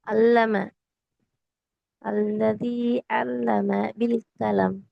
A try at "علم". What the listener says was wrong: அல்லம, ஐன உச்சரிக்கிறா, நல்ல தொண்டையில உச்சரிக்கணும். ஐ. அல்லதி நீட்டணும். அல்லதி நீட்டணும். இதை நீட்டணும், இதை நல்லா குறைச்சிட்டீங்க. லைட்டா அல்லம, அல்லம என்றதோட நிக்கணும். அல்லம, ம என்றது கூட பிழைதான்.